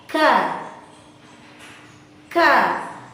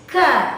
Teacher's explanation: Keluarnya nafas ketika kaf dilafazkan, ada nafas yang dikeluarkan. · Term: huruf kaf